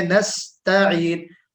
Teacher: ता में इस्तिफाल है और आइन जो है वो हर्फे मुस्तालिया में से है, हर्फे इस्तिअला है।